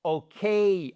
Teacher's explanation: vous avez un accent tonique sur le K et ce n'est pas un quai, d'accord?